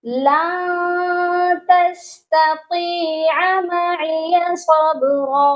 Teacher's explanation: اور لن یہاں پر ہم نے اخفا کرنا ہے، سافٹ غنہ کرنا ہے